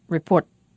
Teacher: we make a complete glottal stop and we don't let the air escape at all for a moment